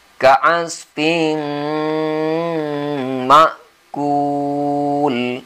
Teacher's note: Maka kita baca dengan guna atau dengung. Masukkan suara ke hidung. Tahan selama 2 harakat. 2 ketukan. Ka'asfin ma'kul.